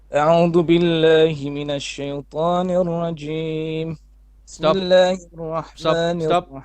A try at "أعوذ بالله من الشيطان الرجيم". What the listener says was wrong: Stop. You did it on the rajim. You have a bit of air escaping. Try again. After the meme.